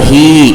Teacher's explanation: ہا یا زیر ہی، یا ساکن سے پہلے ہا کے نیچے زیر ہے، یا مدہ ہوگا، تھوڑا سا کھینچ کر کے پڑھیں گے